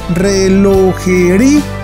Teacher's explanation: Pero al pronunciarla, resulta que el acento recae sobre la vocal cerrada, o sea sobre la I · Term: hiato